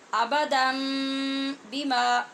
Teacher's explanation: آبادن آگے ہے بیما، جب اس کو ملایا تو یہ جو آبادن نے نون کی آواز تھی اس کو ختم کیا اور یہاں پہ میم لائے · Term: اقلاب